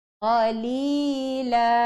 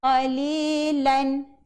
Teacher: Bila berhenti daripada dua baris tinggal jadi satu baris dan dipanjangkan menjadi 2 harakat.